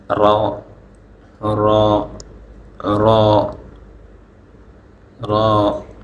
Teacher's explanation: জিহ্বার আগার পিঠ তার বরাবর উপরের তালুর সঙ্গে লাগিয়ে